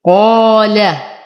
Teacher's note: أفخم القاف أعلى درجات التفخيم، فهو مفتوح وبعده ألف. أرقق اللام وأخلصها من تفخيم القاف.